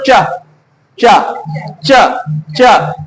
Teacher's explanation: देखो मसूड़े प लग रहा है जाके दांत प भी नहीं लग रहा है